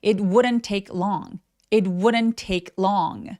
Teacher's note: 이 d는 약간 굴러가는 느낌으로 발음해요. 그래서 would wouldn't 이렇게 리을 비슷하게 소리 내시면 됩니다.